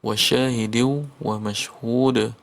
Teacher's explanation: Wa syahidiu wa mashhud, maka ditasdidkan ya pada kata diu, dan di akhirnya mashhud itu ada hukum qalqalah. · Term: idgham